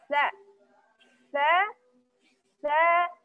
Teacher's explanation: makhrajnya di ujung lidah, keluar, bertemu dengan ujung gigi seri atas. Jadi lidahnya wajib keluar. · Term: huruf ta